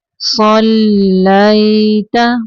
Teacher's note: یا ساکن ہے، اور یا ساکن کے پیچھے زبر ہے یا لین، نرمی سے پڑھنا ہے اس کو